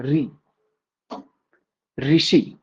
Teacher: मूर्धा और जीभ के स्पर्श वाले भाग से उच्चारित स्वर उसे मूर्धन्य स्वर कहते हैं